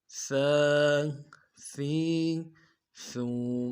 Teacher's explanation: زبان کا سرا اور سامنے والے دانتوں کے سرے کے ساتھ جب لگے گا تو یہ لفظ سا ادا ہوگا، باریک نرمی سے ادا کرنا ہے۔ سا کھڑا زبر سا، کھڑا زبر کو ایک الف دار میں کھینچیں گے۔